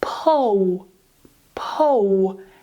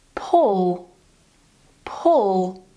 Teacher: when you do the W sound, you're moving your lips. But when you do the dark L, you don't move the lips, you only move the tongue. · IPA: [ɫ]